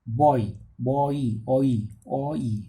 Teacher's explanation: Back vowel goes towards the centralized front rounded vowel.